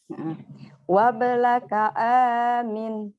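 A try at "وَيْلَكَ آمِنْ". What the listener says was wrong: Oke, tapi titiknya itu bukan 1 loh, 2.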